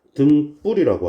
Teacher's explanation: 뒷소리 된 소리로 발음이났습니다